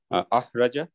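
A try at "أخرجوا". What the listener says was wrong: এক আলিফ টান হবে কিন্তু, হ্যাঁ।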